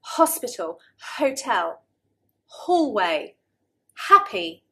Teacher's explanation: breathy sound, something the Italians often don't like, is a very common sound in English when you have H at the beginning of a word